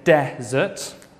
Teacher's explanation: stress on the first syllable and desert stress on the second syllable great okay thank you